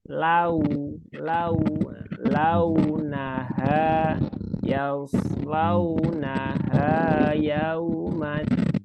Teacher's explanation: Itu waw sukun ya, bunyinya vokal U bukan O, dan hanya itu bukan H tapi H.